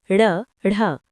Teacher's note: जिनके उच्चारण में जीभ पहले ऊपर उठकर मूर्धा को स्पर्श करें और फिर झटके के साथ नीचे को आए उत्क्षिप्त व्यंजन कहलाते हैं।